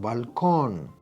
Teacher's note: the last syllable con is the stressed one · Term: stressed syllable